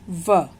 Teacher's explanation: अब है व। व का उच्चारण स्थान है, दांत और ओठ मिल जाते हैं इसको बोलते समय, तो दंत ओष्ठ, और इसका नाम होगा दंतोष्ठ्य।